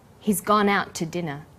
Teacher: The to is unstressed. When we link out, which is stressed, and to, which is unstressed, the final t sound in out is held slightly longer. · The t sound is pronounced only once.